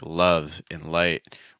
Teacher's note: the L sound in like love and light, where those L's tend to be a little bit firmer and stronger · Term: bright L